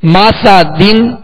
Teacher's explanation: دال دو زیر دن، مسا دن مسا دن. سین کو سختی کے ساتھ اس میں سیٹی کی آواز پیدا ہوگی